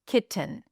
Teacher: The vowel between the T and the N is a reduced vowel. It's a schwa. It is barely there.